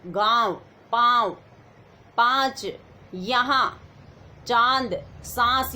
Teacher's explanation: अनुनासिक स्वरों के उच्चारण में मुंह से अधिक और नाक से बहुत कम सांस निकलती है। मुंह से ज्यादा सांस आएगी अनुनासिक में और नाक से कम आएगी, मतलब दोनों का यूज रहेगा।